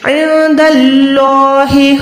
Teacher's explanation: خیر تجدوہ عند اللہ، نون ساکن کے بعد دال ہے، نون کو چھپائیں گے، اللہ کے نام سے پہلے زبر ہے، اللہ کو موٹا رکھیں گے